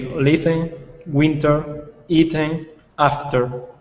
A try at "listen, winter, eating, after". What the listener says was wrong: Perfect. Well done. This is really a silent T, so it's pronounced listen.